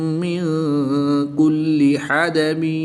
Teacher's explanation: نون ساکن کے بعد کاف حروف اخفا میں سے ہے تو یہاں پر اخفا ہوگا یعنی غنہ زمانی کر کے پڑھیں گے